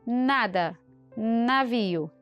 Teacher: Agora, uma diferença do N de nada, de navio, também é nasal, mas o seu posicionamento é diferente. Aqui no M nós temos lábios em contato. No N nós temos língua e alvéolos.